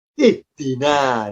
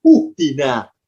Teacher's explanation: Ya karena huruf ketiganya kasroh. Karena dalnya kasroh, alifnya ikut kasroh. Maka kalau diharokati, alifnya, harokatnya kasroh, berbunyi ihdi.